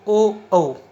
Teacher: इनका उच्चारण करते समय दांत, जीभ और ओठ आदि का संबंध आता है, इसलिए ये आते हैं कंठोष्ठ श्रेणी में